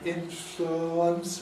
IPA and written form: ˡɪnflʊəns (influence)